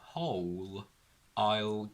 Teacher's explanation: Now, after whole, we have a vowel sound from the word I, but because we have a comma, we sort of need to stop a little bit, and if we stop, we don't connect these two sounds, so whole still has a dark L